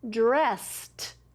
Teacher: the ed makes the T sound at the end of that word